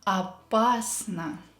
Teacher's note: O not stressed, so we will pronounce it as A.